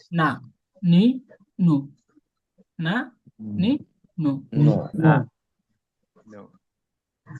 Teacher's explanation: নুন জিহ্বার আগা তার বরাবর তালুর সঙ্গে লাগাইয়া।